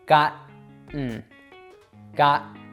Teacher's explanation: What you're going to do is stop your tongue behind your teeth before that plosive sound is able to be made.